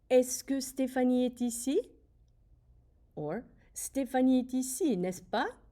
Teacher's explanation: Notice that my voice does go up at the end.